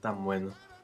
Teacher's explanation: after that N, the B is going to be an occlusive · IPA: [tam.ˈbwe.no]